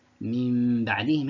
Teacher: the nun sakinah is switched into a hidden meme accompanied with a غنة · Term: إقلاب